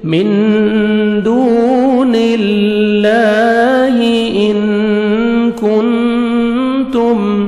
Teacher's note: من دون اللہ، واو مدہ، دال کو 1 سیکنڈ کھینچیں گے، اللہ سبحانہ وتعالی کے نام سے پہلے زیر ہے، آپ نے لام کو باریک پڑھنا ہے